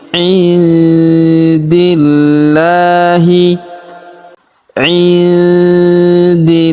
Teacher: Pada huruf lam kita tahan dan kita tekan karena terdapat tanda tasdid di atasnya. Lalu kita panjangkan dua harakat karena alif kecil di atasnya.